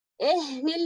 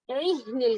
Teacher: अभी देखिए इसमें यहाँ पर ये जो वतकूनुल जिबालु कलइह्निल है ना, इसको आइन को हलक के बीच से अदा करने की कोशिश में इसको ए मत होने दिएगा, यानी कि कसरा जो है वो हमें एकदम बारीक लेना है। री री एहनिल नहीं कहेंगे, इहनिल कहना है।